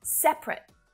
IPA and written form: 'sep (ə) rət (separate)